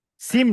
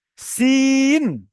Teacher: সিম নয়, সিন। শেষে নুন উচ্চারণ হবে, আমার দন্তের ন উচ্চারণ হবে।